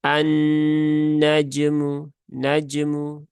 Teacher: Jadi cukup sentuhkan saja di makhrajnya huruf Jim ya di tengah lidah langit-langit atas kemudian segera pindahkan ke huruf mim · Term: Jim yang sukun